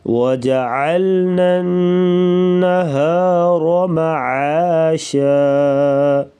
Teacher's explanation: وجعلنا یہاں پر ادغام کریں گے یعنی غنہ ہوگا، را کے اوپر زبر، را کو موٹا پڑھیں گے